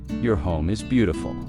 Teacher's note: Stress beautiful to make the compliment sound genuine.